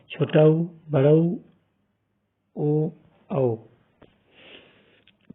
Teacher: जिन स्वरों के उच्चारण में ओष्ठ गोलाकार या वृत्ताकार हो जाते हैं उन्हें हम वृत्ताकार स्वर कहते हैं।